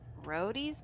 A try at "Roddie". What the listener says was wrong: I think you should roll the R.